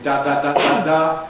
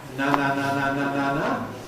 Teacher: Crucial difference between da da da da da and na na na na na na is the position of the veum, the position of the soft pallet.